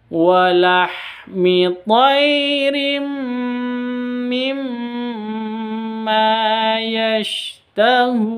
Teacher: Tanwin bertemu dengan mim idgham bi gunnah, terus ada mim tasydid gunnah, ma-nya juga dibaca panjang.